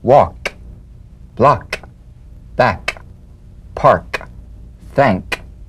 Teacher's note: With the tongue in the G position, let the tongue spring away in the soft, unvoiced click of the K drum beat. Feel a crisp tap and a pulsation in the back of the tongue. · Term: unvoiced tongue back plosive consonant